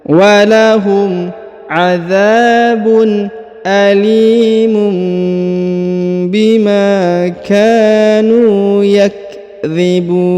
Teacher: Perhatikan huruf li dipanjangkan 2 harokat karena di depannya terdapat ya sukun. Kemudian tanwin un bertemu dengan ba maka didengungkan dan ditahan 2 harokat ya. Alimum bima, huruf ma dipanjangkan 2 harokat karena ada alif di depannya.